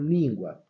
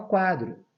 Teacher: um ditongo crescente porque vai dar semivogal para vogal